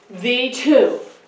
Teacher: When I say the two, I hear the T-O. The is kind of unstressed. So this would be unstressed and this would be stressed.